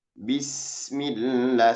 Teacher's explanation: ketika kita mengucapkan sin itu ketika sukun alirannya agak panjang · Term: rokoah